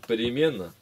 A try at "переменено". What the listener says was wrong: Переменено, не переменно.